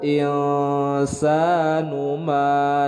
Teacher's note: nun sukun bertemu dengan huruf sin, hukum bacanya adalah ikhfa, didengungkan, ditahan 2 harakat.